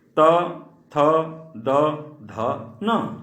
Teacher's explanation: अगला है दंत। त थ द ध न, इसे दंत वर्ग कहा जाता है, कारण कि इन सब का उच्चारण दांत से होता है।